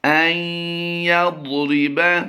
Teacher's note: ہم نے نون کی آواز کو سائلنٹ کر دیا ہے، یا کی آواز کو ہم نے حمزہ کے ساتھ دیا ہے۔